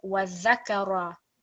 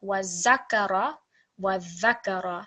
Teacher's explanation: It's similar to the way that you would read tha, but there is a slight buzz in the sound of the dhal. So it's subtly different to the way that tha is read, but the placement of the tongue on the top two teeth is exactly the same.